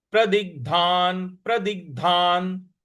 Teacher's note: जो ग है यहां पर हमको आघात देना है